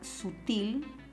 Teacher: la palabra sutil es una palabra que lleva la mayor fuerza de voz en la última sílaba. Entonces, eso quiere decir que sutil es una palabra aguda, terminada en L.